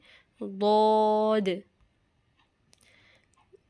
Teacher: زبان کے کنارے کو دائیں یا بائیں جانب اوپر کے داڑوں کی جڑ سے لگائیے۔ ضاد بہت موٹا اور اونچا پڑھنے جانے والا یہ حرف ہے